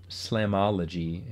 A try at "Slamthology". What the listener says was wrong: independent Slamthology. The TH is not silent.